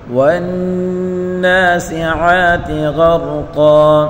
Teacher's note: عین کو ایک الف کی مقدار کھینچ کر پڑھیں گے